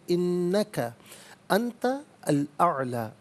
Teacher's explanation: انت میں نون ساکن اس کے بعد تا حرف اخفا آ رہا ہے، تو نون ساکن کو اخفا کے ساتھ جو ہے وہ پڑھیں گے۔ اخفا کہتے ہیں ناک میں آواز چھپا کر گنگنانا۔